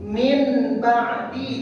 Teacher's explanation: A yang diganti bi diganti bunyi nun jadi bunyi mim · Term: iqlab